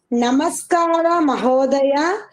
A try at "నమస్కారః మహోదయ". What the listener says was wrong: నమస్కారః విసర్గలు చెప్తున్నారండి.